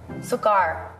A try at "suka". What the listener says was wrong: You said sukar. You spelled it with R.